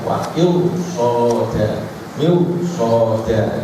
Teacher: Kemudian halaman 203, roh sukun yang sebelumnya kasroh tapi dibaca tafkhim itu apabila bertemu huruf shad atau pokoknya huruf istilah yang ada itu shad, kemudian apa qaf, seperti wa'il soda. Dan walaupun kasrahnya asli, tapi karena sesudah roh sukun ada shad, maka harus dibaca tebal